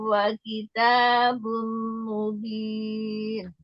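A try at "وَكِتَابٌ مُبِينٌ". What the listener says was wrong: Wa kitabum mubin. Eyang, bacanya kurang lama gunanya. Wa kitabum, tahan.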